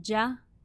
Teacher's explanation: there's voice in there the flow of air is stopped completely the back of the tongue and the middle of the tongue are both lowered creating a sound that is light · the gene is a voiced sound so your vocal cords should be vibrating there's voice in there